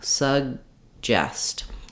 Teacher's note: So the air stops and then we release it in the J sound at the front of the mouth. The first vowel in suggest is going to be very reduced.